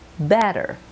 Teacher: the two T's make a soft D